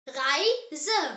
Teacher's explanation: R pronounced as air. The German air is made from the back of the throat, like you're gently gargling.